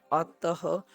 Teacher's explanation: तो आप जब लिखते हैं अतः, क्या लिखते हैं, अतः, तो अत के साथ क्या शब्द जोड़ते हैं, विसर्ग जोड़ा है आपने, ये आपकी ह की ध्वनि देता है